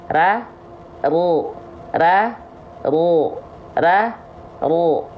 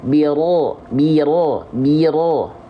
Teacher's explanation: lafalkan bunyi vokal O itu karena mengangkat bagian pangkal lidah. Disebut sifatnya adalah isti'la.